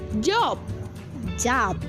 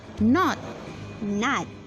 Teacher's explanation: When British speaker will say this vowel, their lips might be slightly rounded. But American use a different vowel sound and their lips will be more open.